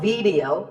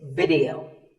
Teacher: both the I and the E are pronounced as short I sounds.